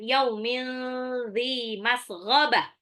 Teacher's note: Yaumil yaunya ini sifat lin ya, karena huruf berharokat fathah bertemu dengan waw sukun atau nanti ya sukun itu juga sifat lin. Tanwin ketemu zal ikhfa, tanwinnya n-nya itu disamarkan.